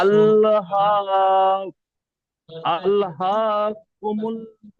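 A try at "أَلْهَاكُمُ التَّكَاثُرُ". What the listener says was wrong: কুমুত কুমুত। মিমটা গিয়ে ডাইরেক্ট তার সাথে যোগ হবে। মিম তা পেশ মুত, তা যাবে তা, মুত তাকাসুর। আল্লাহ কুমুত তাকাসুর।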